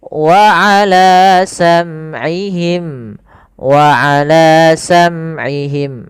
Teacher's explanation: Kemudian pada lafal wa ala sam'ihim, wa ala sam'ihim, ini sama tadi ya, mim mati ketemu ain, harus jelas.